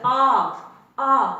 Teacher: ਆ ਜਦੋਂ ਮੈਂ ਬੋਲਿਆ ਆ, ਤੁਸੀਂ ਖੁਦ ਦੇਖ ਸਕਦੇ ਹੋ ਜੀਭ ਆ ਜਿਹੜੀ ਉਹ ਹੇਠਲੇ ਦੰਦਾਂ ਦੇ ਬਰਾਬਰ ਰਹਿ ਰਹੀ ਹੈ। · ਜਦੋਂ ਅਸੀਂ ਬੋਲਦੇ ਆ ਤਾਂ ਜਿਹੜੀ ਸਾਡੀ ਜੀਭ ਆ, ਕਿਉਂਕਿ ਅਸੀਂ ਇੱਥੇ ਜੀਭ ਦੀ ਉਚਾਈ ਜਾਂ ਜੀਭ ਦੀ ਸਥਿਤੀ ਦੇ ਆਧਾਰ ਤੇ ਦੇਖ ਰਹੇ ਹਾਂ, ਜਿਹੜੀ ਸਾਡੀ ਜੀਭ ਹੈ ਉਹ ਆ ਦੇ ਉਚਾਰਨ ਦੇ ਸਮੇਂ ਆਮ ਹਾਲਤ ਦੇ ਵਿੱਚ ਰਹਿ ਰਹੀ ਆ, ਨੀਵੀਂ ਹੀ ਰਹਿ ਰਹੀ ਆ, ਦੰਦਾਂ ਦੇ ਹੇਠਲੇ ਦੰਦਾਂ ਦੇ ਬਰਾਬਰ ਰਹਿ ਰਹੀ ਆ। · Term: ਨੀਵੇਂ ਸਵਰ